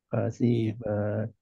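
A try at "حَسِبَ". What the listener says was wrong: Nah, si-nya masih kepanjangan, Pak. Masih kepanjangan. Hasiba.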